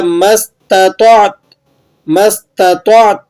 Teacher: یاد رکھیں تا کی آواز کو آپ نے وقف کی حالت میں اچھے طریقے سے ظاہر کرنا ہے۔ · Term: تا کی اصلی آواز